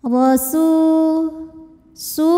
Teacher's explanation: rnya dibunyikan secara tafkhim sebab ro berbaris fathah maka bunyinya tebal